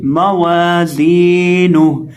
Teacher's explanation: اب یہاں ہم زا کو بھی ایک الف کے برابر کھینچ کے پڑھیں گے کیونکہ زا کے ساتھ یا مدہ ہے، اور ہا کو بھی کھینچ کے پڑھیں گے کیونکہ ہا کے اوپر الٹا پیش ہے، تو اس کو پڑھیں گے موازینہ، اور وقف کرتے وقت یہاں ہم ہا کو ساکن کریں گے